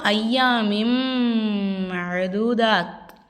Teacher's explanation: சது செய்யப்பட்ட மீமையும் சது செய்யப்பட்ட நூனையும் நம்ம ஒரு செகண்ட் அழுத்தி உச்சரிக்கணும்